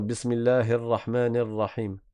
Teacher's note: les gens ne mettent pas une vraie kasra au niveau du ha et au niveau du noun